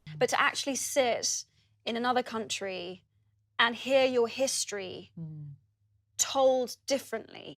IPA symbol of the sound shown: iː